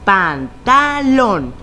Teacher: En esta palabra, la sílaba tónica se encuentra en lón y recordando las reglas sabemos que es aguda porque está en la última sílaba y termina en N.